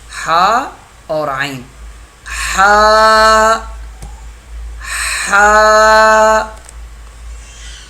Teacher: ہا ہا، حلق کے بیج والے حصے سے ہا ادا ہوگا. حلق کے درمیان سے ہا اور عین دو حرف ادا ہوتے ہیں